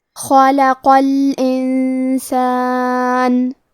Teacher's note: کلمت خلقہ میں خا کے ادائیگی حلق کے اوپر والے حصے سے ہے. خا حروف تفخیم میں سے ہے تو ہمیں حرف الخا کو موٹی آواز میں پڑھنا ہے.